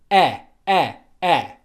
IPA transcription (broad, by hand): ɜ